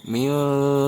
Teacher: Nun sukun bertemu huruf ta, ini adalah ikhfa, mesti dibaca samar.